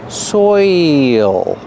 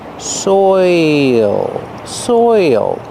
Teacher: You have the oi sound followed by the dark L.